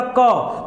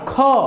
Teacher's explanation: जहां कम हवा निकले अल्पप्राण जहां ज्यादा हवा निकले महाप्राण · क में कम हवा, ख ज्यादा हवा, गो में कम हवा, घ में ज्यादा हवा